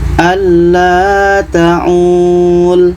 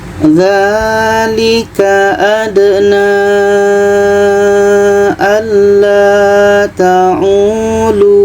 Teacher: Contoh, dzalika adna alla ta'ulu. Waw mati di akhir, setelahnya ada huruf berbaris di depan. Itu kalau berhenti tetap dipanjangkan, panjang 2 harokat.